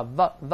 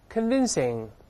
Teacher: 字母▁V▁是上牙触下唇发▁v▁v▁这个声音 ，再来一遍▁，convincing，▁可信的。还有后面这个有说服力的，这两个词是同义词。有说服力的不是令大家能相信的吗？令我们能说服我们的，令我们觉得是真的。再读一下有说